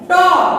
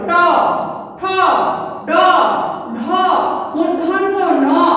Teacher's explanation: দাঁতের গোড়ার সঙ্গে জিহ্বার ডগা উল্টো করে স্পর্শ করে যে ধ্বনি উচ্চারিত হয় তাকে বলবো আমরা মূর্ধন্য ন ধ্বনি।